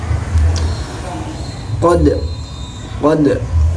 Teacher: Apa itu qalqalah? Yaitu membaca huruf yang terakhir, huruf mati dengan cara terpental. Lidahnya itu terpental.